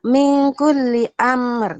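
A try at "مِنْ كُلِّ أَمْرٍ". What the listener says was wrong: Jangan lama-lama. Amr itu kelamaan. Min kulli amr. Segitu. Min kulli amr.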